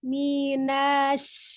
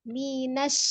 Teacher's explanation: Tapi minash langsung ya, tidak ada mat setelah nunnya. Maka karena dia langsung ditasdidkan ke huruf shinnya, bukan minash atau mi-nya dengan panjang mi seperti ya.